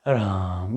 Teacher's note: और त्रिमात्रिक प्लुप्त जो है जिसका नामकरण प्लुप्त किया है, जिसको त्रैमात्रिक कहते हैं, जिसमें रा में ये 3 अक्षर आता है, इसको रा को तिगुना खींचते हैं, राम। ये दुख प्रकट करने के लिए इस तरह का उच्चारण किया जाता है दुख से।